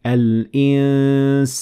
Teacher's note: my mouth looking like the seen, as if I'm saying the seen, but I'm letting air through my nose while I'm doing that. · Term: ikhfa